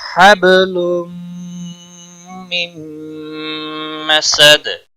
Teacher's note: اور اس میم پر بھی گنہ ہوگا، سین کو کھینچنا نہیں، دال وقف کی صورت میں ساکن ہو جائے گا اور اس پر قلقلہ بھی ہوگا